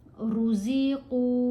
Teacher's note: क़ाफ को मोटा भी पढ़ना है और लंबा भी पढ़ना है। फिर इख्फा करेंगे, मिन नहीं पढ़ेंगे।